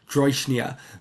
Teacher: the rhotic becomes the palatal approximant version of the rhotic because it's adjacent to the palatal stop, and the voiced palatal stop is just voiced, not devoiced, because it's in this kind of cluster.